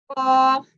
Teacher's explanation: زبان کی جڑ اور وہ جو لٹک رہا ہوتا ہے گوشت لحاظ اسے کہتے ہیں وہ آپس میں ملتے ہیں تو یہ قاف پڑھا جاتا ہے.